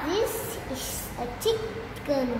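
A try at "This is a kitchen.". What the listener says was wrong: The chicken or the kitchen? Yeah, the kitchen.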